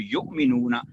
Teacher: جو ہم پڑھتے ہیں قرآن کریم میں یؤمنون، وہ واو پر حمزہ پر جزم ہوتی ہے، واو پر حمزہ اور حمزہ پر جزم ہوتی ہے، پھر جھٹکا لگتا ہے